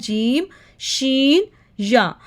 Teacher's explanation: जीम में जो ज़ुबान का दरमियान का हिस्सा होता है ऊपर मुकाबल तालु की तरफ उठता है